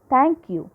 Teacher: u is a weak syllable so here it is troche because strong syllable is followed by a weak syllable